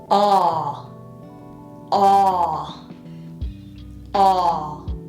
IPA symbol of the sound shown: ɑ